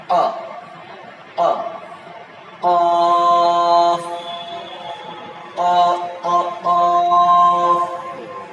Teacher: জিহ্বার গোড়া উপরের তালুর সাথে টাচ হয়।